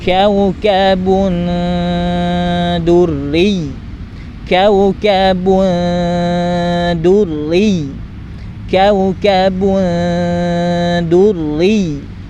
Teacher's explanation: Kemudian bagaimana cara mendengungkannya? Sama, dengung terlebih dahulu, kemudian lidahnya sambil diarahkan ke huruf da.